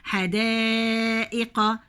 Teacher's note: المد هنا دي موجة البحر وبعديها همزة بجيبها 4